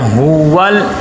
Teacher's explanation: ہا کے اوپر پیش ہے، ہونٹ گول ہو جائیں، پیش کو ادا کرتے ہوئے ہونٹ گول ہوتے ہیں۔ ہول آگے لام کے اوپر جزم ہے اور یہاں پہ کلکلا نہ بنے، ہول آواز رک جائے۔